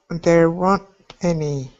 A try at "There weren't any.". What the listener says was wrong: There weren't any. Keep practicing that pause. Sometimes you pause just a little bit too long.